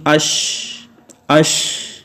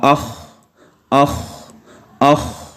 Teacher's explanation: آج جو پڑھ رہے ہیں وہ ہے صفت ہمس، اور اس میں یہ ہوتا ہے کہ سانس جاری رہتا ہے اور آواز پست ہو جاتی ہے. تو آہستہ آہستہ جب ختم ہوتی ہے آپ اپنے ہاتھ کو منہ کے قریب کریں تو وہاں پہ آپ کو جو ہے وہ ہوا نکلتی ہوئی محسوس ہوگی.